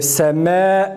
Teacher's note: Yani kesreye meyletmek. Kesreye semme dediğimiz zaman kesreye meyletmiş oluruz ki buna imale denir.